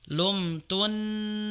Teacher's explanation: bukan lumtunan tapi yang tasdid nun yang depan ya. Sehingga dibacanya lumtunani bukan lumtunan tapi lumtunnani.